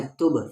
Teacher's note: پھر یہاں پر قلقلہ ہو جائے گا کیونکہ با ساکن ہے